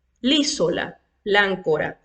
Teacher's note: la vocal del artículo la se elimina si la siguiente palabra comienza con una vocal